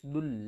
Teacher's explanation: دال کو ہم نے لام کے ساتھ ملانا ہے، دال لام کے اوپر سختی کریں گے